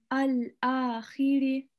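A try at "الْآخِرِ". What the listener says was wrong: So the alif should be a bit more empty. Al-akhiri.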